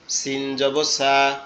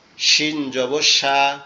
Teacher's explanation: সিনটা কি হবে, একটু সিসির আওয়াজ হবে, কিন্তু শিনটা শক্ত আওয়াজ হবে। দুই দাঁতের পাটি একসাথে চেপে থাকবে, থেকে শক্ত আওয়াজ হবে।